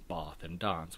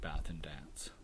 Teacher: American English preserves that earlier vowel, the A, in words like bath and dance.